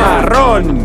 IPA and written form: ma´ron (marrón)